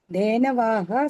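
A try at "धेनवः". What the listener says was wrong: Bhagini, are you reading Dhenavaha? Is there Dirgha there? Only Visarga is there with the Hraswa Akara. Dhenavaha. Not Dhenavaha. There is no Dhenavaha. Dhenu Shabda, like Guru Shabda. Guravaha, no. Guravaha, right? Dhenavaha, like that.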